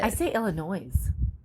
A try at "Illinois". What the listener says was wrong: You say because you pronounce every letter. Illinois. I think it's Illinois.